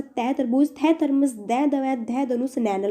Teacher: जिनका उच्चारण ऊपर के दांतों पर जीभ लगाने से होता है उनको भैया हम दंते कहते हैं